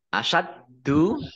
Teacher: dalnya dibaca double, ada tasdidnya.